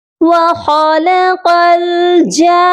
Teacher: جان، اور اس کے بعد نون مشدد ہے، اس پر غنہ بھی لازمی کیا جائے گا، تو یہ ورڈ جانا نہیں پڑھا جائے گا بلکہ غنہ بھی ہوگا اور مد بھی مکمل کر کے پڑھی جائے گی۔